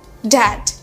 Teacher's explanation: Jadi ketika kita mengatakan dad, akan ada sedikit getaran dari tenggorokan kita.